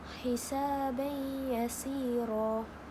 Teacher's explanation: Idgham ma'al ghunnah ni dia berlaku dalam dua perkataan dan cara bacaannya ialah dengan dengung.